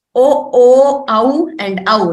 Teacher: Kanthoshtham, the kantha, the throat, and oshtham, the lips.